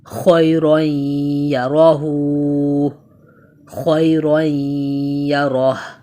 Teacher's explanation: یہاں یائی لین کو بیسکلی ہم جلدی سے پڑھتے ہیں، نرمی سے ادا کرتے ہیں